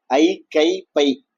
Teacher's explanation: ஐ கை ஐ கை பை தனியா சொன்னா நீண்டு ஒழிக்குது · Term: ஐகார குறுக்கம்